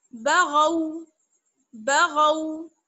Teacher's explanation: आप यहाँ पर गैन गैन की आवाज निकालें और गाफ की आवाज नहीं आनी चाहिए